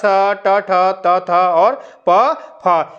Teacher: इनका जब उच्चारण करते हैं तो जो है गर्जना नहीं होती है कंपन नहीं होती है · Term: अघोष